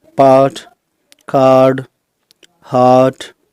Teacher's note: Friends, आर को कहीं बोला जाता है और कहीं नहीं बोला जाता, तो चलिए हम इसको भी देख लेते हैं। आर के बाद अगर कॉन्सोनेंट साउंड है तो आर साइलेंट रहता है, जैसे कि पार्ट, कार्ड, हार्ट।